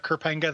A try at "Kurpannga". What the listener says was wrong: I think it's Kurpannga. You got to do a rise on the vowel in the middle there. Kurpannga.